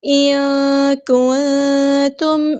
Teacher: نون ساکن کی آواز کو ہم یہاں پہ چھپا دیں گے. ان کنتم، اور نون ساکن کنتم میں بھی نون ساکن کی آواز کو چھپا دیں گے، اخفا ہوگا.